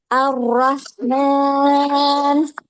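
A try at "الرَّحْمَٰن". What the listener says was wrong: R-nya Ar-Rahman. Takrirnya jangan ini. Kalau dihitung mungkin dua ya, jangan tapi Ar-Rahman.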